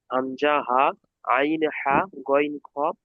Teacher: গলা থেকে উচ্চারণ হয়, এই জন্য গলার অক্ষর বলা হয় হালকি। হালক মানে গলা।